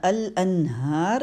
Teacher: یہاں پہ نون کا اظہار ہوا ہے تو نون کا مخرج لیں گے. جب اظہار ہوتا ہے تو نون کا مخرج لینا ہوتا ہے.